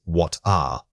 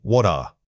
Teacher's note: the T in what and the following vowel must link together. The transition should incorporate a soft audible flow of air.